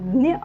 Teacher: मराठीतील ज्ञ आहे दंत्य वर्ण आहे